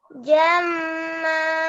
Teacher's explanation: Masuk ke hidungnya masih kurang ditekan ya